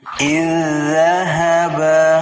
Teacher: dia dibaca idzahaba dengan mentasdidkan huruf zal pertama ke huruf zal yang kedua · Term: idgham mutamasilain